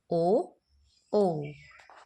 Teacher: तो इनका उच्चारण स्थान है हमारा कंठ ओष्ठ यानी कि गला और होठ दोनों ही